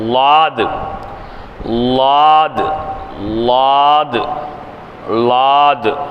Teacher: நாவின் இரு ஓரங்களை சேர்த்து அழுத்தி உச்சரித்தல்.